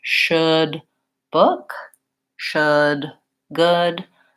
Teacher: I have lip rounding for my SH sound and my tongue position tends to be a little bit better